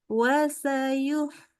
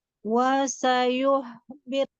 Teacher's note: Mulutnya kurang monyong waktu ya lagi dhammah